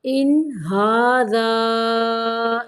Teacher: ان پہ نون کو صرف ظاہر کرنا ہے، غنہ نہیں کرنا